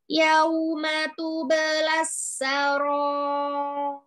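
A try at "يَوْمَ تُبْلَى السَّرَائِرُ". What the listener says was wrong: Yau langsung, jangan yauma, yauma, yauma, yauma, langsung linnya langsung. Ih, kenapa hamzahnya dipanjangkan kasrahnya? Sin, sinnya nih double nih, sin tasydid kan, double sinnya ada dua. Sukunkan dulu sin yang pertama, kasih sifatul huruf. Tu belasta, tu belasta. Ir, ir, langsung ya, ir.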